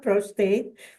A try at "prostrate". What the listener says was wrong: With an R, prostrate.